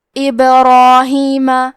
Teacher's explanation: تو ہمیں حرف الرا کو موٹی آواز میں پڑھنا ہے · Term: تفخیم